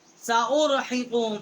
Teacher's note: انہ کان لآیاتنا عنیدا، سأرحقه صعودا، سأرحقه صعودا، سأرحق، ہا جو ہے بڑی ہا ہے، اقصی حلق سے اس کا مخرج ہے، قاف ہے قوی کے متصل، بڑی قاف ہے، زبان اوپر کی طرف تالو کی طرف ٹکر کھاتی ہے تو یہاں سے اس کا مخرج ہے